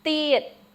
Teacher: Remember, it's not tiet or thiet. Our th in Khmer is with your tongue behind your teeth.